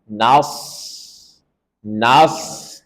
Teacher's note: Maka setelah nun kita tebalkan shad, nas. Dan ingat shad dia punya sifat rokhawah, mengalir suara dengan sempurna, dan ada sifat sofir, desis, nas. Jadi alirkan dengan sempurna.